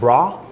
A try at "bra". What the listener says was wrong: Like bra. But Swedish is more like bra, like A bit more stronger A, bra. I think, and a stronger R. Bra. Bra.